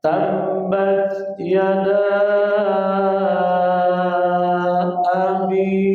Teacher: abi-nya mad tabi'i 2 harakat